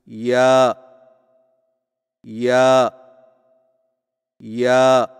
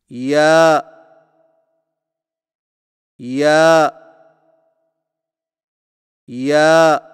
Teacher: زبان کے درمیان کو تالو کی طرف بلند کرتے ہوئے باریک آواز میں پڑھیں، یعنی یا یا یا۔